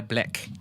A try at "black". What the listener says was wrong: You have to roll your tongue more, though.